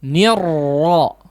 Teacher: bukan nirwo ya, tapi langsung ditebalkan dari R-nya